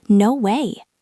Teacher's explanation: We stretch out the word way.